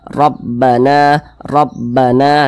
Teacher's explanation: dia pasti dibaca tebal dibaca tfkhim jadi ketika Kita mengucapkannya maka pangkal lisan kita itu naik terangkat ke atas Rabbana Rabbana dia ditebalkan Rabbana kemudian na na dibaca panjang ini